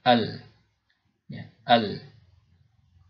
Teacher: Tapi karena terhalang oleh lidah, ya, jalur keluarnya itu atau jalan keluarnya itu terhalang oleh lidah, maka suara dari kedua huruf ini, ya, akhirnya lewat sebelah kanan dan kiri lidah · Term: al-inhiraf